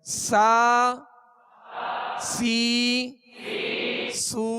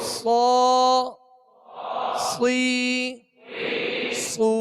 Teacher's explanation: سین کو باریک پڑھیں گے اور صاد کو پر یعنی موٹا پڑھیں گے, یہ اس کا فرق ہے.